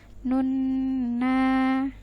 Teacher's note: Yauma yaku panjang, ku-nya 2 harokat. Nun, ini ada nun yang bertasydid, kita tahan dulu. Nun sekitar 2-3 harokat, kemudian na-nya kita panjangkan 2 harokat. Nun na gitu ya.